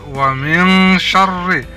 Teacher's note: nun mati bertemu shin disebut ikhfa, dibaca samar-samar